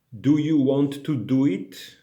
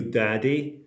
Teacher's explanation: when i'm speaking english i'm using the polish t and the d